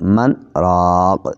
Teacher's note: من کے نون کا را میں ادغام نہیں ہوگا، بلکہ من الگ اور اس کے بعد راق الگ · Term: سکتہ